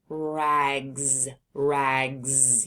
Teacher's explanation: Rags. You can hear the S is making a Z sound at the end of rags.